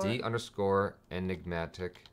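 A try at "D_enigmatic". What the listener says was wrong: Underscore enigmatic. It's not mactic, it's matic.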